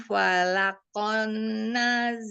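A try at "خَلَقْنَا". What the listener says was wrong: Bukan fala, khola. Kholaqona. Kho. Kho ya, bukan fa.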